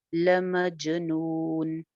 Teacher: نون شد پہ غنہ کر کے، ہو ایک الف لمبا، لمجنون، جیم پہ کلکلا ہو جائے گا